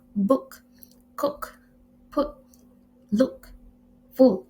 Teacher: Next is a closed back wall sound produced in the back part of the vocal tract with the tongue close to the back of the root of the mouth and the lips in a rounded position. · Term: closed back vowel sound